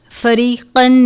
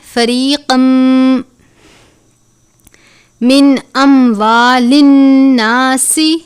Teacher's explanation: إِلَى الْحُكَّامِ لِتَأْكُلُوا فَرِيقًا، تنوین ہے، اس کے بعد میم مشدد ہے، تنوین کو میم مشدد سے ملا کر ادا کریں گے. فریقم پڑھیں گے، فریقن نہیں پڑھنا. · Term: غنہ